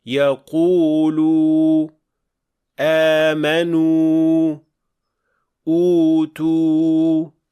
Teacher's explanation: Bu ikki xil vav ikki xil maxrajdan chiqadi. Vavul maddiyah og'iz bo'shlig'idan chiqadi.